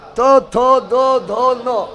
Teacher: जब भी तो थो दो धो नो बोलेगा तो जीभ जो है दांत में टच करेगा, बिना दांत में टच करे नहीं बोल पाएगा।